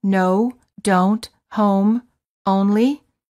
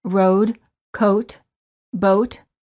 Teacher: for the O the lips are very rounded and tense and the tongue is a bit tense and it moves from the mid High to the high position